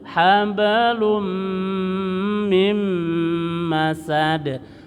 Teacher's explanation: Domatain bertemu dengan mim, namanya idgham bi gunah, tahan.